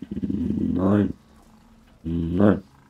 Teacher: It's like a mix between vocal fry and pulling the vocal fry backwards into your mouth.